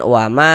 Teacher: Karena di sini ada alif, sebelumnya ada harokat fathah. Sehingga ma dibaca panjang, mad tabi'i panjang 2 harokat